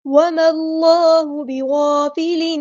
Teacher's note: حمزہ الوصل ہمارا ڈراپ ہو جائے گا. اللہ کا جو لام ہے یہاں پہ پر پڑا جائے گا. اس میں جلالہ تفخیم ہو رہا ہے.